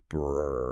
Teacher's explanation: You vibrate your lips while blowing air through them. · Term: lip trills